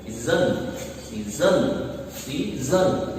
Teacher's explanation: इसमें पहला जो सिलेबल है सी वाला, इसको हम अनस्ट्रेस्ड करेंगे और दूसरे को हम स्ट्रेस्ड बोलेंगे। तो स्ट्रेस के लिए हम यहाँ पे एक लाइन लगा देते हैं, इसका मतलब हमें स्ट्रेस किस एस पर देना है, सीजन, सीजन, सीजन, इस तरह से बोलेंगे इसको।